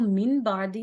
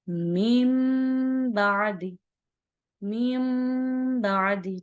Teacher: یہ جو من کی آواز ہے اس کو میم سے بدلیں گے